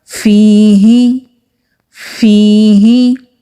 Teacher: ہا حروف ہلکی ہے، جو سینے کی طرف حلق والا حصہ ہے وہاں سے یہ ہا ادا ہوگا